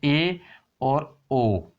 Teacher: अर्ध संवर्त का मतलब वे स्वर जिनके उच्चारण में मुख संवर्त स्वरों की तुलना में आधा बंद सा रहता है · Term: अर्ध संवर्त स्वर